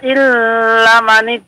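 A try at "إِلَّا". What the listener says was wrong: Illa 2 harakat. Ya, jangan terburu-buru Pak.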